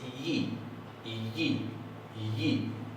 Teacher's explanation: básicamente es una I un poco más cerrada. En vez de ser una I, es una yi, la yod.